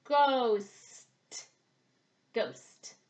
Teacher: Our mouth starts open and back. Our tongue comes up behind our teeth for s and then goes up for t.